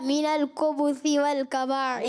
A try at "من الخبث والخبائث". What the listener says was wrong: من الخبث نہیں ہے، من القبائث نہیں ہے، من الخبث یہ خائے. من الخبث والخبائث.